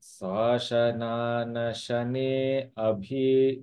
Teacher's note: There is a slight pause after the ne because the next letter is starting with a vowel. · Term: virama